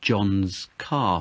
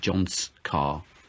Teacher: When we're talking about possession, we use the apostrophe s, which is a z sound